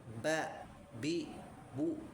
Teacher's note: dia punya sifat syiddah tertahan suaranya ba bi bu gitu ya.